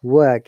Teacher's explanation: in British English, we don't pronounce R at all in this word